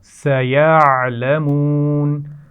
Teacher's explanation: عین کے مخرج کو واضح کرنا ہے لیکن خیال رہے کہ یہاں پر آواز قلقلہ کی طرح نہ ادا ہو